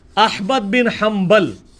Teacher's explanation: با آ گیا نون ساکن کے بعد تو نون مکمل ختم ہو جاتی ہے